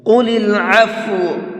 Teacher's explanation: قاف کو منہ بھر کے پڑھیں گے